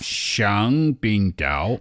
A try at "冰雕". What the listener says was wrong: The only thing you should be careful about is that 冰雕 first tone is ice sculpture, whereas 冰钓 fourth tone is ice fishing. They're quite close.